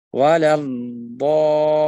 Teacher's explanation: Perhatikan pembacaan huruf lam. Huruf lam diangkat sedikit ditekan karena bertasydid. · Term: an-nabr